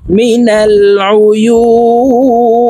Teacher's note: তিন আলিফ টেনে নুনকে সাকিন করতে হবে, কারণ মদের হরফের বামের হরফে ওয়াকফ হইলে মধ্যে আরজি তিন আলিফ টানিয়া পড়িতে হয়।